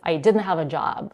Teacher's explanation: She's dropping the t in the word didn't.